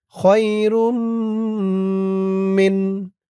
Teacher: তানবিনের পরে ঈদগামে বাগুন্নার 4 হরফের 1 হরফ মিম আসছে তাসদীদ সহকারে, গুন্না হবে